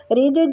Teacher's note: جیم پہ قلقلہ کریں گے، ساکن جیم ہے